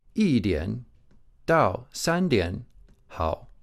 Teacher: the number 1, yi, is a first tone. It's a high level tone. But when it's followed by other characters, it'll drop to a fourth tone. Unless it's followed by a fourth tone character, in this case dao, and E would change to a rising tone in that case.